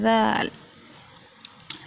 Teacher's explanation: زبان کا سرا سامنے کے اوپر والے 2 دانتوں کے کنارے سے جب لگاتے ہیں تو ادا ہوتا ہے ذال